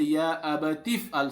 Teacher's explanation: this alif al-amr remains silent because this alif is hamzatul wasl